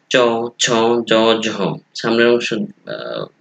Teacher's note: এই ধ্বনিগুলো উচ্চারণের ক্ষেত্রে জিভ প্রসারিত হয়, সামনের অংশ শক্ত তালু স্পর্শ করে উচ্চারিত হয়। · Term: তালব্য ধ্বনি